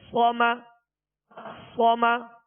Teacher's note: صاد زبر صا، میم زبر ما، صما، صما. صاد کو پر پڑھیں گے اور اس میں سیٹی کی آواز پیدا ہوگی